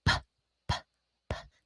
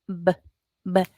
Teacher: they're formed the same exact way, except that we have to use our voice box to make the b sound